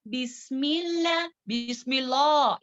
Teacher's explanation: बिस्मिल्लाह बारीक पढ़ेंगे लफ्ज़ जलाला यहाँ पर क्योंकि कसरा है मीम में